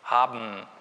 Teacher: Haben, da müssen wir nicht mal den Mund aufmachen. Haben, da geht direkt von dem Plosiv, geht die Öffnung durch die Nase ab. Haben, ist völlig normal. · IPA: [habm̩]